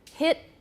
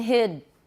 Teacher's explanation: the t at the end of the word is longer than the d